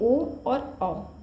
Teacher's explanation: कंठ ओष्ठ, जिनके उच्चारण में कंठ और ओष्ठ दोनों का यूज होता है, वो होते हैं ओ और औ।